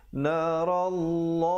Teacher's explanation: Ra-nya dibacakan tebal kerana baris atas, dan lafzul jalalah walaupun kelihatan baris satu tapi tetap dibacanya dengan dua harakat.